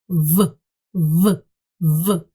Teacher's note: нам треба закусити нижню губку, щоб утворився такий звук в в. Треба закусити нижню губу і сказати в в.